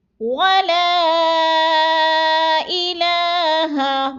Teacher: ولا کو تھوڑا سا کھینچنا ہے، مد ہے، 4 الفی مد ہے، 4 الف کے برابر ہم نے اس کو لمبا کرنا ہے